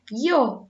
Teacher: Es interesante tener en cuenta que en las regiones del norte de nuestro país, las personas pronuncian la Y y la doble L o la L como la I